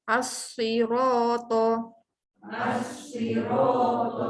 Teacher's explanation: Kita tak baca pun bunyi lam tu. Sebab lam tu tak ada tanda. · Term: alif lam syamsiah